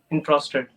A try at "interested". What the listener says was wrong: Your pronunciation sounds like interested, less like interested, because it is if you say interested, it sounds like you're saying entrusted. entrusted is entrusted. Interested is interested. So interested has to be yeah, the distinction has to be very clear.